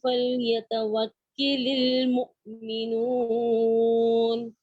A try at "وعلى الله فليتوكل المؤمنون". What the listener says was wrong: وعلى الله یہاں سے دوبارہ پڑھیے. علی عین عین کو واضح کیجیے.